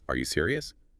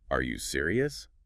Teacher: It barely sounds like a question. But add that little upward flick at the end